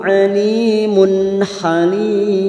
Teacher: tanwin bertemu ha dibaca jelas tanpa mendengung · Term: Idhar halq